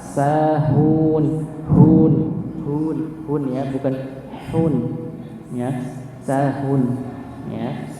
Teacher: Kita tepatkan huruf sin tipis ya. Tidak ada sifat tawasyi atau menghembuskan nafas, tidak ada nih, menyebarnya nafas tidak ada.